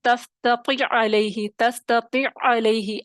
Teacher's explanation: عین کا عین میں ادغام ہو گیا، دونوں کہاں سے، وسط حلق سے ادا ہوں گے، مخرج بھی ایک، صفات بھی ایک. اب کیا ہوگا، عین پہلا ساکن تھا، دوسرا متحرک تھا.